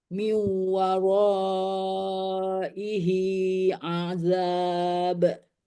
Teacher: Miu itu idgham bigunah karena nun sukun bertemu dengan waw dibaca dimasukkan dibaca dengung setengah dengung